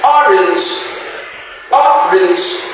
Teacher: This stroke sound here means that the stress is on the first syllable and not on the second syllable, because this particular word here, orange, has two syllables, but the stress is on the first syllable.